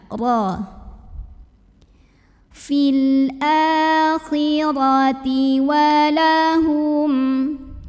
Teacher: karena roknya berbaris di atas maka bacanya ditebalkan pangkal lidah dinaikkan